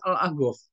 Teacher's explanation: Habib-Habib yang datang ke Indonesia itu kan mengucapkan huruf kof itu pakai go.